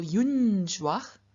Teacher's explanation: get a first dual unjuage and what's happening here is that in front of the palatal consonant ju the n changes into the palatal nasal